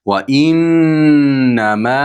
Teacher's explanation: To'rt va besh harakat miqdorida cho'zamiz.